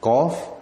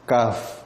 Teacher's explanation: Qaf dia tebal, kaf dia nipis.